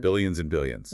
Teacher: he consciously emphasized the B sound when saying billions so people wouldn't mishar it as millions.